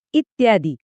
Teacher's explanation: इतिमधला ई आणि आदीमधला आ हे ध्वनी एकत्र येऊन या तयार होतो